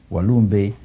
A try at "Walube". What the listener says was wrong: Funny you call me Walumbe. It's Walube. We took out the M. Yeah. It's Walube, yes.